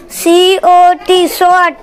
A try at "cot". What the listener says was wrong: C बरोबर काय येते मग कशाला शॉर्ट म्हणाले कॉट म्हण.